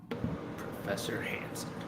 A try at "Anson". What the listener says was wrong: It's actually pronounced Anson, not Hanson. There's no H.